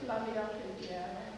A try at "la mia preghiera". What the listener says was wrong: And what I'm after is, if you notice, your mouth is about like this when you speak it. La mia preghiera, and I'm going to sing la mia preghiera. It's not this la mia preghiera. It's not necessary to have all that motion.